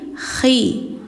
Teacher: bacanya ada kayak dengkur khi, jadi bukan hi tapi khi.